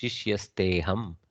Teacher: because of the ekara, there is a purva rupa sandhi of the akara. That means it has elided and left only the ekara to be pronounced.